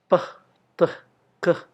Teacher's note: Nah, jika Anda mengucapkan p, t, k, jari Anda tidak akan menangkap getaran di tenggorokan. Karena itu adalah voiceless consonants.